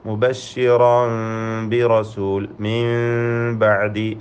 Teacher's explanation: സാക്കിന നൂനും തൻവീനും ഇഖ്ലാബ് ചെയ്ത് സാക്കിന മീമിൻ്റെ ശബ്ദം നൽകി മാറ്റി മണിച്ചുകൊണ്ട് ഉച്ചരിക്കണം. ഫലത്തിൽ സാക്കിന മീമിൻ്റെ ഹുക്മായ ഇഖ്ഫ ഷഫവി എന്ന അവ്യക്തമാക്കി മണിക്കുക എന്ന നിയമം അനുസരിച്ചുകൊണ്ട് മുബശ്ശിറൻ ബി റസൂൽ മിൻ ബഅദി എന്ന് ഉച്ചരിക്കുക.